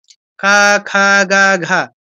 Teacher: একদম জিহ্বার গোড়াটা একদম পিছনের দিকে কণ্ঠে গিয়ে কণ্ঠে ঘষা দিয়ে নামছে। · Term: কণ্ঠবর্ণ